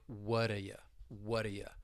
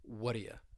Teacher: But when you have that T and the D, it almost is like the T just goes away and it elides. You're not really going to hear it. So because of that, it's almost going to sound like whata ya, whata ya.